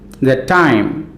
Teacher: the is unstressed time is stressed